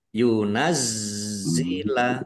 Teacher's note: zatnya ada tasdidnya dibaca double ditekan biar tampak doublenya yunazzila alaina nun fathah alif mat tobi'i panjang dua harokat ya isab ya.